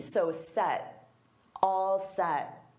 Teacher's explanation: And notice I don't push out that T.